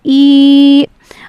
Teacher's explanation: Second آیت کی طرف چلتے ہیں۔ ایلافہم، یہاں پہ حمزہ کھڑی زیر ای ہے، اس کو ہم نے ایک الف کے برابر کھینچ کر پڑھنا ہے، ای، اور اسی طریقے سے لام کھڑا زبر لا کو بھی ایک الف کے برابر کھینچ کر پڑھنا ہے، ایلافہم۔